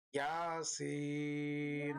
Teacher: ইয়াতে এক আলিফ টান হবে, সিন এ 3-4 আলিফ টান হবে।